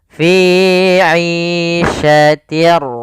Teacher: suara tanwin awalnya fiyatin ketemu ro maka langsung masuk di r-nya bunyinya langsung ke huruf ro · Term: Idgham bila gunah, idgham bila gunnah